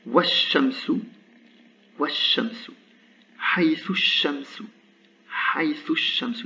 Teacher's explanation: La voyelle de liaison disparaît, le lam disparaît.